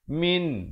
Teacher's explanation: Nun mati di dalam Al-Quran di Rasam Usmani diberikan tanda sukun ataupun tanda mati. Min, bunyi saja min, jangan dipanjangkan, jangan didengungkan. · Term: izhar halqi